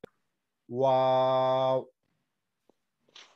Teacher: দুই ঠোঁট গোল করিয়া ওয়া উচ্চারণ করতে হয়